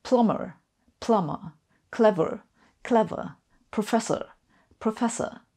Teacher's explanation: The Brits also drop those R's at the end of words.